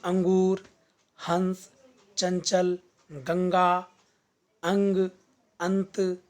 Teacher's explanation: जब किसी वर्ण का उच्चारण करते समय हवा नाक से बाहर निकलती है, हवा नाक से बाहर निकलती है, मुंह से नहीं। उस वर्ण के ऊपर बिंदु का चिन्ह अंकित कर दिया जाता है। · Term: अनुस्वार